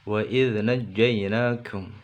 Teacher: Jangan wa id, tapi wa id, tapi tidak boleh nempel, karena huruf dzal makhrajnya atau tempat keluar hurufnya ujung lidah di ujung gigi atas, dan ujung lidah dan ujung gigi atas tidak nempel atau renggang. Wa id naj, ya di sini naj, na masuk jim ditekan, kemudian di sini jimnya bersih atau tidak keluar nafas.